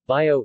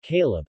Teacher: B, voiced bilabial plosive, syllable initial and final.